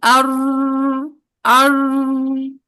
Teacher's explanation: अच्छा, अगर हम ज़ोहरुल लिसान का इस्तेमाल नहीं करेंगे तो हमारी साउंड बनेगी अर अर। देखिए आवाज जारी हो रही है, मोटा भी किसी हद तक हो रहा है, लेकिन सिफत तकरार ही नहीं आ रही है